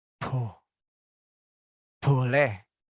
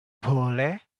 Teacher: kalau orang Jawa bicara ada huruf B-nya, dia akan keluar seperti ada angin